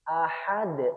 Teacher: Karena ahad dalnya disukun karena waqaf. Karena dal ini adalah huruf qalqalah. Sekali lagi harus dipantulkan.